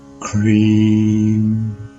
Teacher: the vowel in this word is a long vowel and is sounded for twice the length of time